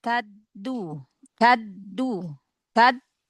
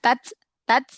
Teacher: huruf dal kan dia punya sifat jahr syiddah ya